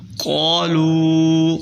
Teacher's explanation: قالوا، قاف کو موٹا کریں، لام کے آگے جو واو ہے وہ واو مدہ ہے اور اس کے اوپر مد بھی ہے، تو اس کو ذرا لام کو کھینچنا ہے، 4 الف کے برابر، 5 الف کے برابر آپ کھینچ سکتے ہیں۔